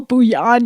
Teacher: You have to say the L, bouillon. You can't skip the L's.